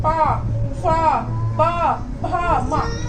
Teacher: पा वाली लाइन ओस्ट मतलब होठों से बोली जाती है। आपके जो लिप्स है वो आपस में टच करते हैं